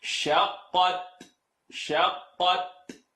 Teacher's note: I want you to pop the Ta at the end.